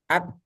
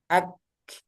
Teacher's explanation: hanya dilepas saja ak, nah, itu hamasnya. Jadi hamasnya itu ada di ujung ak